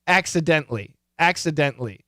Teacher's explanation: typically the t is cancelled